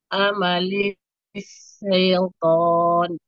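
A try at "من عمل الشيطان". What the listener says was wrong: Nah, itu masih sin. Jadi huruf shin bukan sin.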